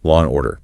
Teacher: If you say it fast, you often insert a little W sound between the 2 words to link the final vowel of law to the initial vowel of and. It makes the flow smooth, but it adds an unexpected sound that can derail a listener who's expecting perfect enunciation. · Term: liaisons